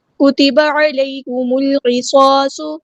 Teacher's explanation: میم کو ہم نے لام کے ساتھ ملا دینا ہے، حمزۃ الوصل ہمارا ڈراپ ہو جائے گا · صاد کی پیش یعنی ضمہ کو لمبا نہیں کریں گے